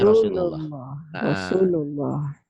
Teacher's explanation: lafadz Allah dibaca tebel kalau sebelumnya baris atas